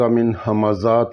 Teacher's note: نون ساکن تھی بعد ہا حرف ہلکی آ، اس واسطے اتھیں نون نا اظہار ہو سی